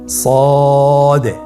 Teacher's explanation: জিহ্বার আগা, সামনের নিচের 2 দাঁতের পেট ও আগার সঙ্গে লাগিয়ে উচ্চারিত হয়। তাহলে আপনারা জিহ্বার আগা, সামনের নিচের 2 দাঁতের পেট ও আগার সঙ্গে লাগিয়ে উচ্চারণ করুন সদে। · জিহ্বার আগা সামনের নিচের দুই দাঁতের পেট ও আগার সঙ্গে লাগিয়ে উচ্চারিত হয়।